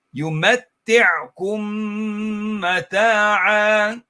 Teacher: And we said this was idgham of a meme sakin. So you merge the noon, you merge the meme into the next meme.